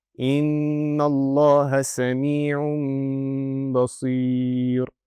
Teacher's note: So I will not pronounce the noon sakina, it will turn into a meme sakina